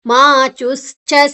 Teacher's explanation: ವಿಸರ್ಗದ ಉಚ್ಚಾರಣೆ ಮುಂದಿನ ಅಕ್ಷರ ಸ ಇದೆ ಅಂದ್ರೆ ಗಾಳಿ ಹೊರಗೆ ಹೋಗುವಂತ ಶಬ್ದ